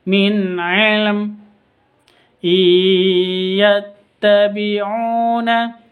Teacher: Non sukun bertemu dengan ya. Bacaan masuk disertai dengan dengung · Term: idgham bi gunnah